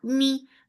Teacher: for kasra give e sound and the e sound should be short. It should not be too long.